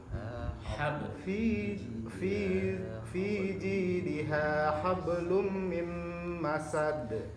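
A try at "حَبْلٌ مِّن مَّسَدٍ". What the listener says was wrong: Nah, hablum jangan di ba sama lamnya jangan disambungkan ya. Contohnya begini. Jangan hablum. Hablum enggak boleh. Hab sendiri, hablum. Nah, kalau dibaca hablum salah. Hablum salah. Hablum. Antum baca baknya tetap qalqalah. Hablum. Nah, habel gitu kan ya.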